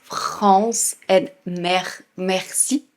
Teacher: focusing on keeping that R sound in the back of your throat